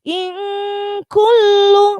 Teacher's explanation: In kullu. Nah, di situ lamnya adalah ada syiddah atau ada tasydidnya, maka harus ditekan.